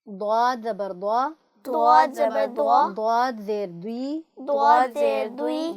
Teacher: آپ کی زبان کی کروٹ اوپر کی بائیں جانب کی 5 داڑوں سے لگے